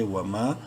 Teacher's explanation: الف مدہ ہے میم کو ایک الف کے برابر لمبا کریں گے